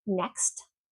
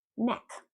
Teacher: If you don't pronounce that T in next, you're saying neck.